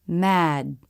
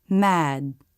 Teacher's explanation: Notice the last sound is the beginning of the D, with the vocal cords engaged because it's a voiced consonant. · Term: stop D